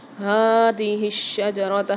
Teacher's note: ہا کے اوپر کھڑا زبر ہے، اس کو کھینچ کے پڑھیں گے اور بھاری آواز کے ساتھ پڑھیں گے۔ شین کے اوپر تشدید آ رہی ہے، مشدد آ رہی ہے، اس کو سختی اور جماؤ کے ساتھ پڑھیں گے۔